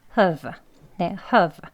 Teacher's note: 허로 시작하지만 으로 끝나는 거예요. 소리가 have 예, 허 이렇게 끝이 으 소리로 마무리가 되잖아요.